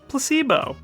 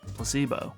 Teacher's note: The stress is on the middle syllable.